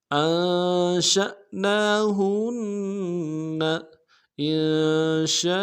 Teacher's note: انشاء میں بھی حمزہ کو نون ساکن کے ساتھ ملائیں گے، نون ساکن میں غنہ کریں گے۔